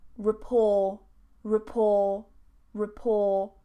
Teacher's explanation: I don't pronounce the T.